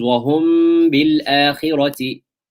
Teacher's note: Almost the meme is hidden underneath the ba, hidden in the ba, and there is ghunnah because the sound is emanating from the khayshum. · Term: ikhfa shafawi